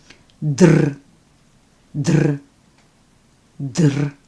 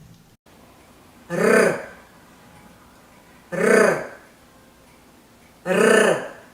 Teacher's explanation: You can produce the Russian R by flapping your tongue against the roof of your mouth. If you pronounce the sounds T or D and roll your tongue, you will get the Russian R.